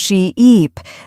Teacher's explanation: exaggerating the long vowel sounds. Say sheep and stretch the E sound she-eep, then say ship with a short sound ship.